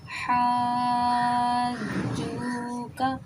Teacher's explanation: کر کے نکال دیتے ہیں جیم میں، حاجو کا ایسے نہیں، جھو جھو جھا جھا کی آواز نہیں آئے گی، مخرج میں رکنا ہے تو انشاءاللہ بالکل جیم صحیح نکلے گا